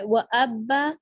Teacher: وقف بالابدال یعنی 2 زبر کا الف مدہ میں۔